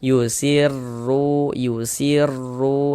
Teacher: Cuman di sini yang kita temui tanda baca dhammah. Maka huruf ro dibaca tebal, dibaca tabkhim. Sehingganya pangkalisan kita naik terangkat ke atas ketika kita mengucapkannya.